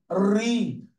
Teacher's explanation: আবার হ্রস্ব উ দীর্ঘ উ এই দুইটা ধ্বনির উচ্চারণেরও খুব একটা তফাৎ আমরা সৃষ্টি করতে পারি না। আর রি যখন উচ্চারণ করি রি, তখন আমাদের জিহ্বা কাঁপে, কম্পিত হয়। যার কারণে ব্যাকরণবিদরা এইটাকে স্বরধ্বনির কাতার থেকে বাদ দিয়ে দিয়েছেন।